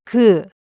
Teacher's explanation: The sound of ㄱ is somewhere between the English g and k.